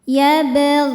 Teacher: Sebab ada huruf qalqalah yaitu ba yang sukunnya sukun bawaan dari kalimah ini ya sukun asli dan ada di tengah-tengah bacaan. Maka ba ini dipantulkan dengan pantulan yang kecil. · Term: qalqalah sugra